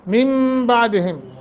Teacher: نون ساکن کے بعد با آ گیا ہے حرف، اس لیے یہاں نون ساکن کو میم سے بدل کر پڑھیں گے